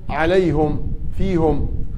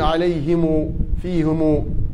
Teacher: في أقوام يقرأوا بالضم عليهم فيهم، وآخرون يقرأوا بالصلة يقولون عليهم فيهم